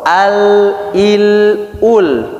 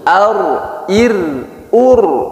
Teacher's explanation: Lam lebih condong ke permukaan, kalau ro lebih condong ke bagian punggungnya. Jadi lam atasnya, ro bagian bawahnya. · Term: inhiraf